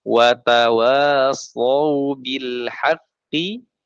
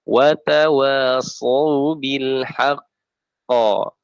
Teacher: maka cara bacanya ditahan 2 harokat baru dipantulkan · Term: akbar